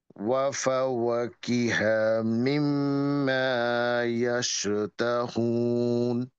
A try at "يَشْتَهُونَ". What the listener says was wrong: আবার দেখেন, ইয়ে হুন, আপনার, আমি বলতে চাচ্ছিলাম একটু পরে, আপনার বড় হায়ের উচ্চারণটা ছোট হায়ের মতো হয়ে যাচ্ছে। মানে আপনি বলছেন হচ্ছে ইয়াশতাহ, এরকম হয়ে যাচ্ছে। এটা হবে হচ্ছে আলহামদুলিল্লাহর হাটা, হ্যাঁ। এটা হবে হচ্ছে, এই হাটা হবে হচ্ছে একটু ভিতর থেকে, ওয়াফা ওয়াকি হা, হা, হা ভিতর থেকে